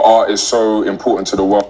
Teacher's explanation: You see, they say the R, apparently the R. He didn't say art, he said R. You see, the T, he didn't pronounce the T sound